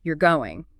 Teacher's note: Now, if I say this with a clear, definitive falling tone, like this, "you're going," now narrow, my voice drops at the end, stays low and steady. Okay, sounds like a statement.